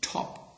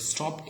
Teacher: top can be aspirated but stop is not aspirated